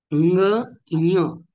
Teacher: य सारखा होतो, परंतु नाकामधून उच्चारण होतं य अशा पद्धतीने.